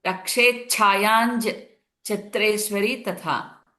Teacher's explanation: Yam is the Anuswara followed by Cha. It becomes NJ sound. So it will become Rakshe Chayanj Chhatreshwari Tatha.